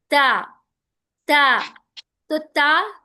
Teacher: تا زبان کی نوک سامنے والے دانتوں کے بیک سائڈ. تا تا کا مخرج، تا جو ہے نا حروف لسویہ ہے.